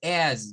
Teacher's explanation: the z is for as, vibration. We have to make vibration